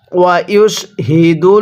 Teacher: আল্লাহ শব্দের লামের পরে যদি এরকম জবর থাকে তাহলে এই লামটাকে মোটা করে পড়তে হয়